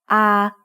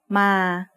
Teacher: sara-a is a long vowel that makes the sound a like the A in father